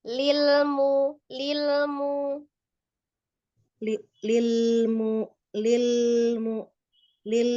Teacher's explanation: jangan ditahan ya untuk lam sukunnya sama lamnya kayak biasa aja